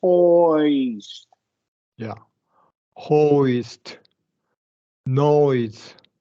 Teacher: really concentrate on the two positions, right? British short O and that Y closing position.